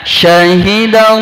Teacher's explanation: Contohnya syahidallah, ketebalannya betul-betul tebal, ya, karena sebelumnya berharokat fathah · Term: tafhim